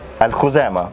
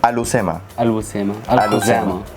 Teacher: Like in the original Arabic word, there's a kha, but in Spanish they don't pronounce that.